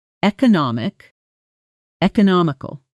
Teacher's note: Notice the extra syllable and the shift in stress